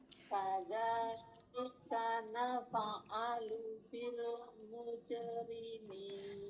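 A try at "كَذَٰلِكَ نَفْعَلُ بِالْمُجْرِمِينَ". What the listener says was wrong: Nafa atau naf'alu, nggak ada harokat fathahnya. Iya, jadi kalau lepas itu jadi seperti ada harokat fathahnya. Kadzalika naf'alu, naf sampai ada f-nya itu hamasnya.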